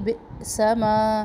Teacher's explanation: حمزہ پہ جھٹکا ہے. آواز میں جھٹکا ہوگا لیکن سانس ہماری جاری رہے گی